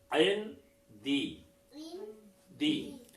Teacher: आयन सकून किया, आवाज को भी काट दिया और ठहर भी गए।